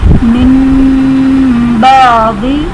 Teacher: نون ساکن کے بعد جب با اس کلمے میں شامل ہوگا، جب ہم اجوں میں اس کو ملائیں گے اس کے بعد ہم نے نون ساکن کو میم سے بدل کر اخفا کرنا ہے یعنی غنہ کرنا ہے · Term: اقلاب